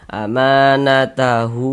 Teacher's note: Tapi karena di sininya bukan hamzah dia mad silah qasirah. Panjangnya mad silah qasirah itu sama 2 harokat juga, sama dengan mad tabi'i begitu.